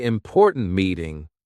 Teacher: Say important meeting with a sharp T at the end of important.